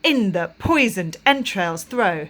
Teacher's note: four strong beats per line and the syllable pattern comes with the stress on the first syllable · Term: trochaic tetrameter